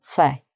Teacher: Fait would be pronounced without the T, just on its own, fait.